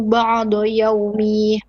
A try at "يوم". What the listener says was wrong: No. If you pause here on يوم, not يومي.